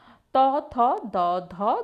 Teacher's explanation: সবচেয়ে সোজা ত থ দ ধ দন্তন্য উচ্চারণ পরিষ্কার করে করবে দেখবে জীভের সামনের অংশটা ওই দাঁতের পিছনে এসে লাগছে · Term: দন্ত ব্যঞ্জন ধ্বনি